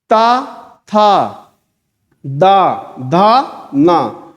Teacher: तो आपकी जीभ जो है इस दांत को, ऊपर वाले दांत को पीछे से छुएगी। सब लोग फील करो, ता, था, दा, धा, ना, आके दांत को छू रही है।